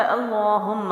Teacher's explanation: تو اللہم جو ہے الف کے اوپر زبر ہے، یعنی یہ حمزہ بن گیا، اور اللہ اور اللہم کے لام سے پہلے زبر اور پیش ہو تو اس کو موٹا پڑھا جاتا ہے۔ لام کے اوپر کھڑا زبر ہے تو ہم اس کو ایک الف لمبا بھی کریں گے